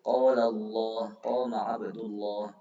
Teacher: Hukum lamnya lafaz jalalah ketika didahului harakat fathah atau dhamma itu tebal, tafkhim